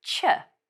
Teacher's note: we add a t sound so she becomes che